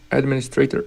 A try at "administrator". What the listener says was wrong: I do administrator with the primary stress on the min. There might be variation on that, but that's what I'd recommend. Instead of administrator with the stress on the stray syllable, I put the primary stress on the min. Administrator.